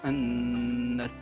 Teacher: Lafaz tersebut hukumnya adalah alif lam samsiah karena alif lam bertemu dengan huruf samsiah, di antaranya huruf zai, yang mana dibacanya alif lamnya disamarkan, diidghamkan pada huruf samsiah. Alif lamnya tidak dibaca jelas.